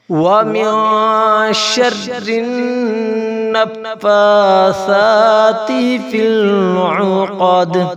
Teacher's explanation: وَمِن شَرِّ النَّفَّاثَاتِ فِي الْعُقَدِ، فا اور سا پر کھڑی زبر ہے، انہیں ایک الف کے برابر کھینچا جائے گا، اور سا جو ہے نرم حروف ہے، اسے جب پڑھیں گے تو سیٹی نہیں نکلنی چاہیے۔